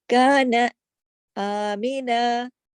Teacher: آمینہ کے اندر الف کے اوپر کھڑی مد ہے تو اس کو ذرا بڑھا کے پڑھتے ہیں ، ایک الف کے اوپر ایک چھوٹا الف اور لگا ہوا